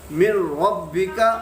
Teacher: را ان 2 حروف میں سے ہے جن کی وجہ سے غنہ نہیں ہوتا، یعنی را اور لام